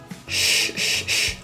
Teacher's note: pronounced as an SH. Shh, shh, shh, with rounded lips and tongue pulled back.